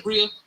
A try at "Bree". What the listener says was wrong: Bree, sorry, I'm tripping. I added an extra syllable.